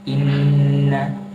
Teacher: bacaannya kita harus panjangkan gunnahnya itu kira-kira 2 harokat